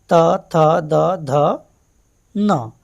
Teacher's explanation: जो हमारे जीभ है, जिह्वा है, वो दंत को यानी दांतों को स्पर्श कर रही है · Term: दंत्य